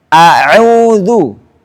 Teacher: Dan hamzah baca dengan tarqiq, tipis.